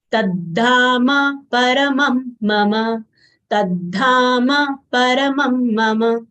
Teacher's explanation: ma, both full letters will say mama and not mum.